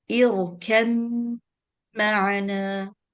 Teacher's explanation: Ba has completely merged into the meme. Okay, you don't pronounce a ba, you just pronounce a meme with a shadda